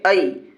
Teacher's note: یا ساکن سے پہلے حمزہ کے اوپر زبر ہے، اس لیے یائلین ہوگی، اور اس کو نرم آواز کے ساتھ جلدی پڑھیں گے۔